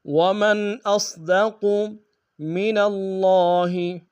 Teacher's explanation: لا ریب فیہ ومن اصدق، ومن میں میم کو نون ساکن کے سامنے آنا، یہاں بظہار ہوگا، حمزہ کو صاد کے سامنے آئیں گے، صاد کو موٹا ادا کریں گے، قاف کو موٹا ادا کریں گے۔ ومن اصدق من اللہ، من اللہ میں نون کو لفظ اللہ کے لام کے سامنے آنا، شد زور دیں گے، کھڑا زبر ایک انداز میں کھینچیں گے۔